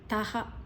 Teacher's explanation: ತಾದ ನಂತರ ವಿಸರ್ಗದ ಉಚ್ಚಾರಣೆ ಹ